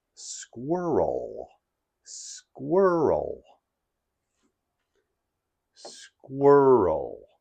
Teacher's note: Squirrel has two syllables, squir and o. And the emphasis is on the first syllable, squir.